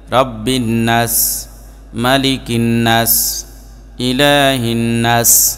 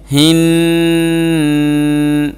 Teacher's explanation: তো এই নুনে গুন্নাও করে না নুনটাকে লম্বাও করে না তো এই নুনে প্রথমে এক আলিফ গুন্না করতে হবে এরপরে এক আলিফ লম্বা করতে হবে